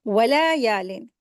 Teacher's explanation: वाव और लाम को जल्दी पढ़ेंगे, हरकत है यहाँ, लेकिन या के साथ अलिफ मद्दा है, 2 हरकत खींच के पढ़ेंगे